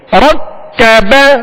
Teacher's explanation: را کو پر کریں گے کاف کو باریک